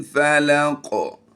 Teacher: हमने यहाँ पर काफ को पुर भी करना है, हालत वक़फ़ में इस पर कलकला भी करेंगे। अगर वक़फ़ नहीं करना तो फिर यहाँ पर कलकला नहीं होगा।